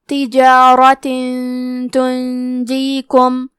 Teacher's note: ہم تنوین کو چھپاتے ہوئے اور غنہ کے ساتھ یہ حکم کو ادا کریں گے